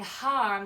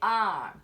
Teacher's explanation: sometimes they drop their hes and instead of saying harm they might say arm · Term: drop their H's